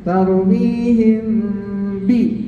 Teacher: mim mati bertemu dengan ba, ada dengung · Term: ikhfa syafawi